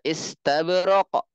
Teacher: karena huruf Qalqalah maka dia dipantulkan I sin Sakinah is ta Ista ba Sakinah muqalqalah istab ro